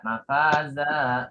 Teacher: Tapi di sini baca 2 harokat. Mafaza, zannya dipanjangin 2 harokat, itu mat iwad.